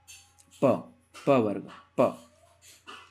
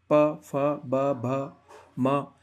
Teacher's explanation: प बोलोगे आप तो आपके होठ, होठ टकरा रहे हैं, ठीक है, बिना होठ को आप टच किए प वर्ग का उच्चारण कर ही नहीं सकते हो, प, फ, ब, भ, म, इन सब का उच्चारण करते वक्त आपको प होठों का टकराना होगा ही होगा, ठीक है।